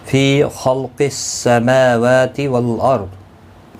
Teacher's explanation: خا اور قاف دونوں حروف مستعلیہ ہیں پر پڑھے جائیں گے